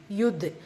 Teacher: தால் சுக்குன் கல்கலத்து சுகுரா சிறிதாக அசைச்சு ஓதணும்.